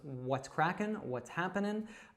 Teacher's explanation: often we'll drop that G and we'll just say the n sound at the end